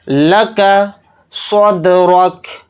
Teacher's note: دال کے اندر قلقلہ کریں گے کیونکہ دال حروف قلقلہ میں سے ایک حرف ہے